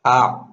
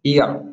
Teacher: یہ الف جو ہے خالی منہ سے نکلتا ہے، اور عین جو ہے حلق سے نکلتا ہے، تو اس کو حلق سے نکال کر کے ادا کریں گے جس سے الف اور عین میں فرق معلوم ہو۔